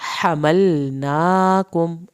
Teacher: हमलनाकुम, हा को हल्क से पढ़ा।